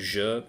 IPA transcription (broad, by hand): ʒ